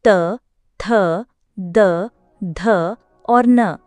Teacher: त, थ, द, ध और न स्पर्श व्यंजनों के त वर्ग के वर्ण हैं। ये सभी व्यंजन दंत्य कहलाते हैं क्योंकि इनका उच्चारण जीभ का अगला भाग ऊपरी दांतों को स्पर्श करके होता है। न इस वर्ग का पंचमाक्षर है और एक नासिक्य व्यंजन भी है।